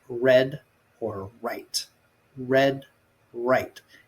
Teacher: you curl your tongue to the back without touching the roof of your mouth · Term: r sound